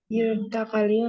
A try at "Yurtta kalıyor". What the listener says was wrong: Yurtta kalıyor ya. Jadi T-nya double. Yurtta. Evet, iki.